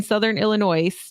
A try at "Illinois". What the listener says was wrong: Southern Illinois you put an S on the end of that